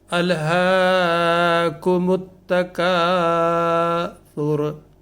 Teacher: تو اس میں سا اور را دونوں میں حرکت ہے، لیکن وقف کی صورت میں را جو ہے وہ ساکن ہو جائے گا